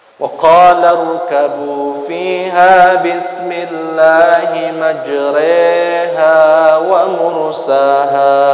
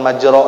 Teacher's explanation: memiringkan bacaan fathah menjadi e, ya, panjangnya e itu 2 harkat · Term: imalah